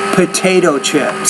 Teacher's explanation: Put more air on the P.